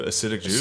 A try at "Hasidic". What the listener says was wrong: H at the beginning.